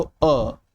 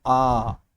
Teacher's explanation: ठीक है, जैसे हम अगर अ बोले तो अ, लेकिन जब हम दीर्घ स्वर बोलते हैं, दीर्घ स्वर होता है आ। ठीक है, तो अ से दोगुना समय लगता है आ को बोलने में